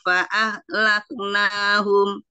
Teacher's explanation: ha itu arkhawah, kaf itu asyiddah tapi ada hamasnya, tapi tetap ngalir